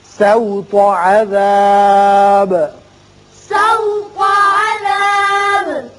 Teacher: سین باریک ہوگا، تو کو پر پڑھیں گے